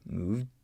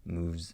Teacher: Practice with hearing those final sounds, either the stop sound, moved, or moves with a little vibration